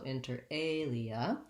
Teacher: Inter has first syllable stress, so inter alia.